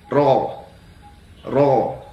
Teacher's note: Maka cara membunyikan huruf roh tebal yaitu dengan menaikkan pangkal lidah ke langit-langit atas.